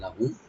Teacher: লাহুম এখানে লাম ওপেন থাকবে, মিম সাকিন এখানে জাহার করবো আমরা, এখানে গুণা হবে না